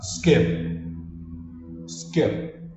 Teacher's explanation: corta o p Fecha a boca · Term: p mudo, mudo